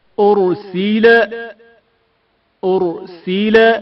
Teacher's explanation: رائے ساکن سے پہلے پیش ہے، جس کی وجہ سے را کو موٹا پڑھا جائے گا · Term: تفخیم